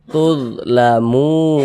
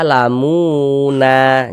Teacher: kalau kita berwakaf di huruf nun kita baca tulamun Jangan dibaca lamuna jangan huruf nunnya kita sukunkan